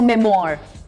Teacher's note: और American pronunciation में there's a hint of rolled R towards the end, so memoir.